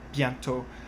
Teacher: bientôt, you would not pronounce that T there